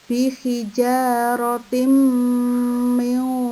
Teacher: tanwin ketemu mim dibaca dengung, itu idgham bi gunnah